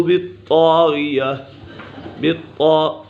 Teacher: ثمود فاہلکوا بالطاغیہ، بالطاء، طاء مشدد ہے، اسے جمع کے ساتھ پڑھیں گے۔ بالطاء، غین بھی پورا ہے اور طا بھی پورا ہے، یہ حرف مستعلیہ میں سے ہے